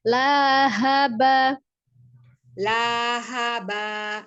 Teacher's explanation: Lahnya panjang, lahaba, tapi sekali ngayun panjangnya, bukan kepanjangan.